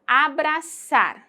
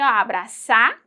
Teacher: Yo pronuncio abrazar con sonido de S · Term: cesseo con S